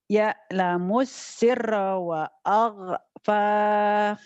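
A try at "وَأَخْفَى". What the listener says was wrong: Ini kha wa akhfa.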